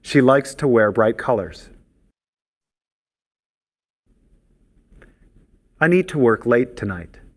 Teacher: Notice the reduced pronunciation of to in the infinitives.